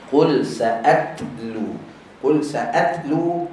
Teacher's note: makhraj ta hujung lidah belakang gigi atas